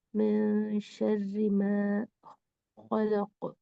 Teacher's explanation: من جو تھا وہ کلیئر ساؤنڈ سے نہیں پڑھا جانا ہے، اخفا کے ساتھ پڑھنا ہے